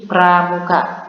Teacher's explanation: Dari kata pramuka, bunyi P dan bunyi R pada kata pramuka itu digabung. Oke, jadi bunyi P dan bunyi R pada kata pramuka itu digabung sebelum masuk kepada konsonan vokal A, konsonan M, vokal U, konsonan K, dan juga vokal A itu konsonan P dan R itu digabung. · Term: double konsonan